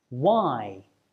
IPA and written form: waɪ (why)